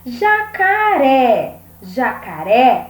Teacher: a última sílaba mais forte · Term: oxítona